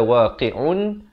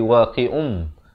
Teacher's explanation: Apa yang ditukar? Bunyi nun kepada bunyi mim. Daripada waqi'un jadi waqi'um. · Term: iqlab